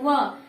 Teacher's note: व का एक उच्चारण वह ही है जो दांत और ओष्ठ दोनों से उच्चारण किया जाता है